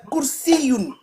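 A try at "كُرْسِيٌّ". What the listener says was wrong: Par contre, ton kef, il est mélangé avec qaf. C'est ka.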